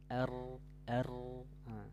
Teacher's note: terakhir apa al-inhiraf ya inhiraf artinya dia Suaranya membelok r r ujung lidahnya naik ke langit-langit akhirnya suaranya terhalang lalu karena dia Suaranya terhalang keluar dari depanah makanya dia keluarnya